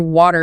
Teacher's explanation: with a flap T, your tongue is just very briefly, very lightly bouncing off the ridge behind your upper teeth as the air continuously flows by. >> So it's not stopping the air at all.